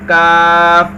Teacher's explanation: اس کا مخرج ہے زبان کی جڑ اور تالو کے سخت حصے سے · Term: باریک کاف